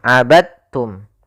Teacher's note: Maka cara membacanya yaitu masukkan huruf dalnya kepada huruf ta